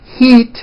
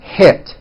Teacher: think of the sound e as in heat as being high up and a as in hit is being a little bit lower